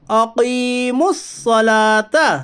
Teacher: الف لام تعریف کے بعد حروف شمسی کے 14 حرفوں میں سے صاد ہے، اس لیے ادغام شمسی ہوگا، یعنی الف اور لام کو نہ پڑھیے بلکہ بعد والے حرف سے ملا کر پڑھیے۔ لام کے اوپر کھڑا زبر ہے، کھڑا زبر برابر ہے الف مدہ کے، اس لیے اسے ایک الف کے برابر کھینچ کر پڑھیے۔ کھڑا زبر برابر ہے الف مدہ کے 2 چیزوں میں، پہلی آواز، دوسری کشش یعنی کھینچنا۔